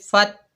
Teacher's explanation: آگے تا مشددہ ہے، فا کو تا سے ملائیں گے فت، تا کے اوپر زبر بغیر کھینچے پڑھیں گے تا، فت،